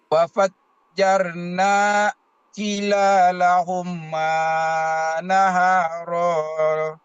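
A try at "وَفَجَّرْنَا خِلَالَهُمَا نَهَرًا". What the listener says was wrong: Wa fajjarna khinya pendek.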